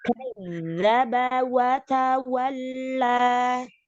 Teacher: Coba zalnya lebih ditasdidkan, lebih keluar.